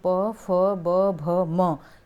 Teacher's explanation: ओष्ठ से यानी कि होठ से बोला जाता है